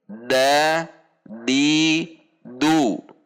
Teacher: Jangan sampai dibaca dengan sedikit mendorong udara seperti huruf ta. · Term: al-jahru